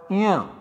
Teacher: This sound is also an Alpa Prana, which requires less amount of breath than say Jh. It is called non-aspirate. · The place of articulation of this sound is Talu plus Nasika, the nose.